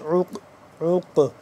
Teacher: قاف کو موٹا کر کے پڑھیں گے اور ساکن ہے قاف تو اس پہ ہم قلقلہ بھی کریں گے